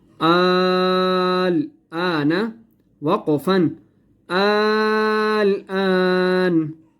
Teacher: ये बड़ी मद है, इसे हम कहते हैं बड़ी मद, ठीक है। इसको हमने 5 अलिफ के बराबर खींच कर पढ़ना है